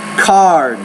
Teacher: the D is a voiced consonant so the vowel which precedes that sound is longer